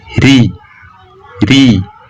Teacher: huruf ro yang tipis yakni tidak ada cekungan pada area Tengah lidah dan pangkal lidah tidak terangkat